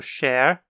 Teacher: o som do sh numa palavra como Cher inclui certo arredondamento dos lábios